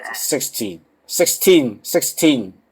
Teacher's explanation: with 16 the stress is on the second syllable